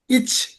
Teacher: நாக்கோட நடுப்பகுதி அன்னத்தோட நடுப்பகுதியை தொடும்